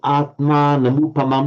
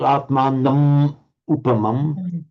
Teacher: followed by a vowel, it's just pronounced and written as an ordinary M, and it follows straight into the vowel.